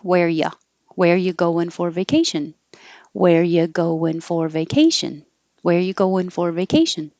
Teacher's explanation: We can get rid of the R, just drop the R completely.